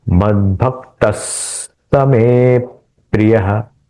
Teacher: स का उच्चारण थोड़ा एक्सटेंडेड करना है।